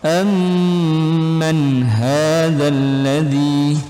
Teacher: nun sukun bertemu dengan huruf ha, itu hukumnya idhar halqi. Jadi dibaca jelas jelas di tenggorokan.